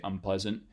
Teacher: If you say it real quick, you could say unpleasant, and most people wouldn't notice that the N got replaced with an M there.